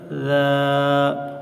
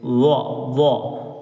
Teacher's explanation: ذال کی آواز باریک ہوتی ہے اور وا کی آواز موٹی ہوتی ہے